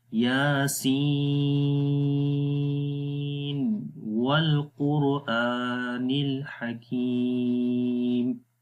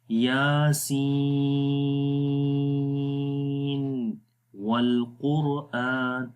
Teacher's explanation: اس کو پھر ایسے ہی پڑھیں گے، یاسین والقرآن الحکیم، یعنی یہاں پر نون ظاہر ہوگا، تظہر النون، نون کو ظاہر کیا جائے گا، یاسین، آخر میں نون کی آواز کلیئر آئے گی، ظاہر ہوگی، اور پھر واو پڑھیں گے، تو یہ وہ جگہ ہیں جہاں پر اظہار ہوتا ہے، یاسین والقرآن، اگر ملا کر پڑھیں گے تب بھی ایسے۔